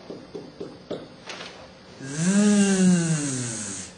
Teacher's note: the tip of my tongue is behind my bottom teeth, like just touching against the bottom teeth, and then I close my teeth and let air through.